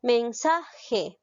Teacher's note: Lleva la mayor fuerza de voz en la sílaba sa. Es grave. No la tildo porque termina en vocal.